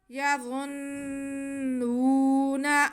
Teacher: نون کی آواز ناک میں بالکل بھی نہیں جائے۔